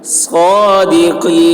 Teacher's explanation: صاد کی آواز سخت ہوگی قاف کی آواز موٹی